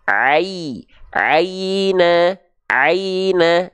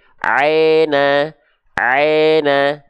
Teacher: jangan sampai berbunyi e, tapi pastikan dia berbunyi i